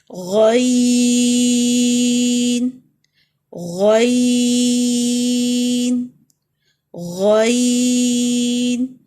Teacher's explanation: اگلا لفظ heavy letter ہے غ، جہاں سے جیسے غرارے بعض اوقات ہم کرتے ہیں، غ غ، حلق کا اوپر والا حصہ، top part of the throat, غ اور اس میں بھی بلندی کی طرف جائیں گے